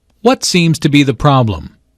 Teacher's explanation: notice that the intonation Falls at the end of the question the doctor wants information not a yes no answer well is